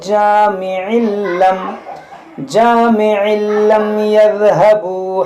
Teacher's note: यहाँ तनवीन के बाद लाम में यहाँ पर इदगाम करेंगे